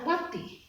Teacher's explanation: Kalau ini kan dalam samsiah. Watini, alif lamnya itu ada tetapi tidak dibaca, langsung huruf ta